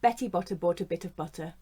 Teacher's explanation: we have the schwa in butter and in the weak form a bit